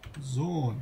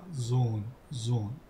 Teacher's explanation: Shikoni pra, këtu me njëherë kuptojmë se pas os ka një hë, sepse e zgjasim on dhe e theksojmë